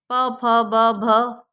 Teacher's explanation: ओष्ठ मतलब होठों से जो टच होता है बोलते समय